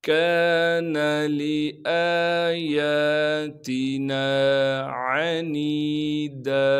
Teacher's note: کان لآیاتنا عنیدا، عین کو صاف کر کے گلے سے نکالیں گے، نون کے بعد یا مدہ ہونے کی وجہ سے نون کو ایک الف کے مقدار کھینچیں گے